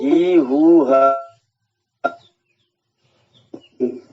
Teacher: विसर्ग की ध्वनि में वही वाले स्वर की ध्वनि निकलेगी